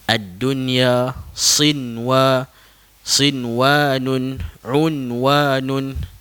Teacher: perkataan yang terdapat dalam al-Quran yang kita hukumnya adalah izhar mutlak dijelaskan bunyi nun mati tersebut walaupun bertemu dengan ya bertemu dengan huruf waw tapi kerana dia bertemu dalam satu kalimah jadi dibacakan dengan jelas